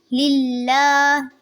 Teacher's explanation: لفظ اللہ کو پر نہیں کریں گے، باریک ادا کریں گے کیونکہ لفظ اللہ سے پہلے زیر ہے